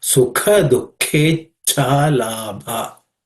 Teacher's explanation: So the bha is again aspirated because the fourth letter in the pa varga, pa class of consonants.